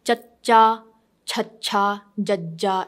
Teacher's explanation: you use your tongue and it hits your middle of your upper palate.